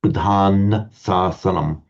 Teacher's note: So I was saying earlier, the syllable would be a long syllable. The poet needed a short syllable here, so he took a liberty and dropped the M off.